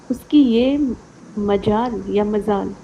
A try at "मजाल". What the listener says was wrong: मजाल, मजाल, उसकी ये मजाल, लिख लो कॉपी हाँ, नुक्ता नहीं है इसमें, ये मजाल है डायरेक्ट।